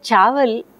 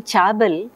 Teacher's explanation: the child instead of producing the fricative V is stopping